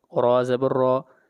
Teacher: را کو موٹا پڑھا جائے گا اس لیے کہ را کے اوپر زبر ہے